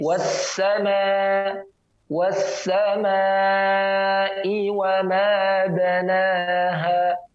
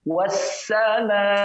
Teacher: Dia dengan merapatkan gigi seri atas dan bawah, pangkal lidah ke pangkal gigi seri bagian bawah tanpa ditekan, dia ditempelkan dengan lembut, kemudian suara mengalir antara gigi seri atas dan bawah. Jadi tajam dia. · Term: safir